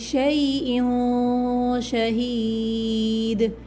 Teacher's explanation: یہاں پر اخفا ہوگا، ناک میں چھپا کے غنہ کیا جائے گا